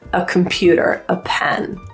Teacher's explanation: when there is a consonant after the word a you'll hear that quick little uh